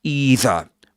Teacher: either with a long e sound at the beginning rather than rather than with a dip thong